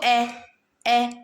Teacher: ए आपका गोल नहीं हो रहा होठ